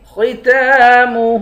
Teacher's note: خا کو موٹا پڑھیں گے، تا پر کھڑا زبر ہے، ایک الف کی مقدار کھینچیں گے، ہاں پر الٹا پیش ہے، اس کو بھی ایک الف کی مقدار کھینچ کر پڑھیں گے۔